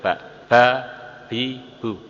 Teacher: ba kedua belah bibir ditekan akhirnya keluar dari baliknya